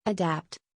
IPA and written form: əˈdæpt (Adapt)